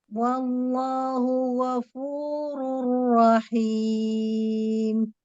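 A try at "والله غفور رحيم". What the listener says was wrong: Wallahu lafzul jalalahnya mau lebih bulat lagi. Wallahu ghafurur rahim. Hanya ya di situ ya perhatikan ghafurur rahim.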